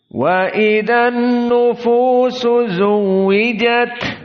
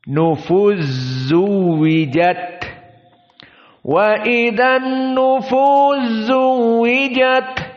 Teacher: sinnya dimasukkan kepada zaai jadi zaainya dalam keadaan Za musyaddadah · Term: idgham alkabir